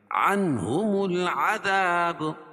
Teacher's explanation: العذاب، اظہار حلقی کیونکہ نون ساکن کے بعد حروف حلقی کے 6 حرفوں میں سے ہا ہے، تو یہاں ظاہر کر کے پڑھیں گے